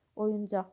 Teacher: vurğu sondadır, yəni 3-cü hecadadır.